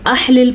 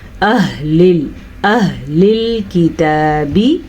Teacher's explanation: یہ والا ہا حلق کا آخری حصہ یعنی کہ سینے سے نکلتا ہے۔ اگر اس کو آپ نے احلل پڑھا یا اخلل پڑھا تو آپ نے ایک بڑی غلطی کر دی۔